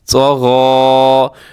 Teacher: طا بھی موٹا ہے، غین بھی موٹا پڑا جائے گا